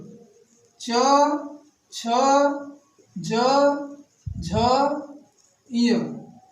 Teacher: और च से लेकर य तक कहां से उच्चारित होता है? तालु से। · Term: तालु से उच्चारित वर्ण